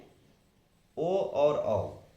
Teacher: कंठ और ओष्ठ से बोले जाएंगे ओ और औ